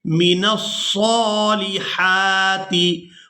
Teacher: صاد کو پر کر کے ادا کریں گے اور ہا کو حلق سے اچھی طرح سے ادا کریں گے،